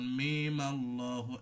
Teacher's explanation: ও এখানে আবার একটা বিষয় থাকে যে ওই আলিফ লাম মিম আল্লাহ, এখানে মিম পরে আর 4 আলিফ টান থাকে না, এই 3 আলিফ টানটা থাকে না, 1 আলিফ টান হয়ে যায়, যেহেতু সুকুন আর থাকছে না, তখন মিম আল্লাহ 1 আলিফ টান দিয়ে চলে যেতে হবে